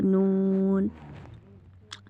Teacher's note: नून अदा होगा जब बच्चे ज़बान का किनारा जब ऊपर वाले दांतों 3 दांतों, ठीक है, सनाया, रुबाई और इनियाब की मसूड़ों से लगे, तो तब अदा होगा नून